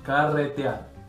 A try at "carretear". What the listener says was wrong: No puede pronunciar la R. Para, rr. Es muy tu gringa.